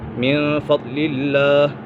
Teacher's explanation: فضل اللہ یہاں پر اکفا کا قاعدہ لگ رہا ہے کیونکہ نون سکن کے بعد فا اور اکفا میں سے ہے تو یہاں اکفا ہوگا، یعنی گنہ کر کے پڑھیں گے